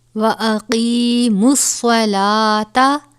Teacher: صاد کو پر ادا کیا جائے گا کیونکہ یہ حروف مستعلیہ میں سے ہے. لام کے اوپر کھڑا زبر ہے، کھڑا زبر کو ایک الف کے برابر پڑھتے ہیں.